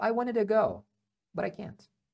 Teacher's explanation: o to que eu já falei vira um a né sempre ele vira um a